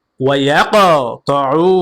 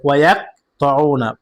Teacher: কফ কলকলা হরফ, প্রতিধ্বনি আওয়াজ দিয়ে ধাক্কা দিয়ে পড়তে হবে। ওয়ায়াকতাউনা, এখন যদি বলেন ওয়ায়াকতাউনা, প্রতিধ্বনি আওয়াজও হয়নি, আপনার উচ্চারণও সঠিক হয়নি।